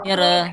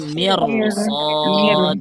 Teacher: Ro-nya jangan mantul ya.